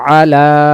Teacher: তারপরে আইন জবর আ লাম খারা জবর লা এক আলিফ তাহলে আ তাড়াতাড়ি লা এক আলিফ টানবো আলা ইয়াতে এখানে কিছু নেই এটা এভাবেই থাকবে উচ্চারণ হবে আলা